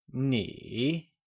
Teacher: The third option here, which is ni, may be described as a falling rising tone.